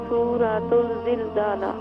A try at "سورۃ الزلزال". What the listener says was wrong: جی سورۃ الزلزالہ نہیں، سورۃ الزلزال.